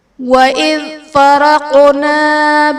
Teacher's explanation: حرف قلقلہ ساکن ہے تو یہاں پر قلقلہ خوب ظاہر کریں گے